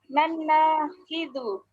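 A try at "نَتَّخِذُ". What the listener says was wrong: Taknya tetap. Nattakhidhu. Iya, jadi bukan nan, tapi nattakhidhu.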